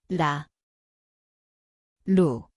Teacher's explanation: It sounds like R/L. The place is the tongue tip, light tap.